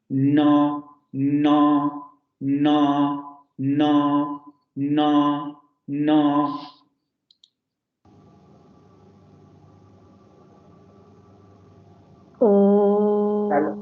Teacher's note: El punto de articulación es el mismo que el fonema anterior, es la punta de la lengua en los alvéolos, pero ahora abrimos la cavidad nasal